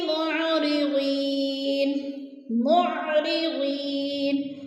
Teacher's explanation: یا مدہ کو ایک الف دو حرکات کے برابر ہم نے کھینچ کر پڑھنا ہے